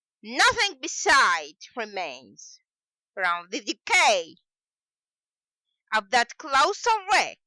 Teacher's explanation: Iambic pentameter, as we have previously said, is a metrical foot, means that we have unstressed syllable followed by stressed syllable for 5 times in the one line